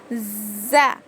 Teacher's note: जुबान की कोनी नीचे के दो दांतों के जड़ में लगाने से ज अदा होता है